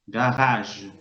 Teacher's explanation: Fíjense que ahí la R, que está entre las dos AES, también suena gutural.